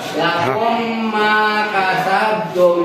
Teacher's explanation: Kalau idgham mutamatsilain atau idghamisen, melebur huruf mim yang satu masuk kepada mim yang kedua.